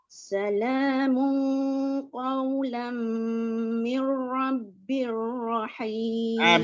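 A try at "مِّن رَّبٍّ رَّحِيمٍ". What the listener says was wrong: Bir ni jangan lama, nanti dia macam bunyi berdengung pula. Mir rabbir. Mir rabbir rahim. Kalau kita tak perhati dia akan mir rabbir. Kalau lama tu dia akan jadi seolah-olah ada kedengungan kat situ.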